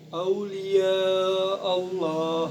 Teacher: lafaz Allah dan kita baca tafkim ataupun tebal. Sebab lam jalalah didahului oleh fathah.